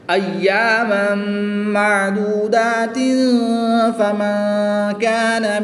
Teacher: تنوین کے بعد فا حروف اخفا میں سے ہے تو یہاں پر اخفا کا قاعدہ ہوگا، غنہ زمانی کر کے پڑھیں گے۔